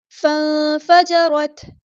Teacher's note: نون ساکن کی آواز کو یہاں چھپا دینا، اخفا ہو رہا ہے ، را ہمارا یہاں پہ ہیوی لیٹر پورا ادا کریں گے،